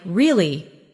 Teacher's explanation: your voice goes up slightly at the end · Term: Intonation